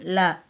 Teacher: நாவின் நுனி மேல் பல்லின் அடியே தொடுவதால் ல தோன்றும்